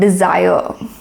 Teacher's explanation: The D is unstressed and sire is is stressed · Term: stressed and unstressed syllables